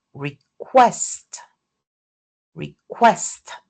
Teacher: the second syllable is is stressed and it starts with a k sound. So, in request the k is aspirated. And these cases, the voiceless stop occurs beginning a stressed middle syllable and is strongly aspirated.